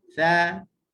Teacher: Beza dia sudut kita bunyi tajam tu. Bunyi desiran tu tidak ada pada huruf tha.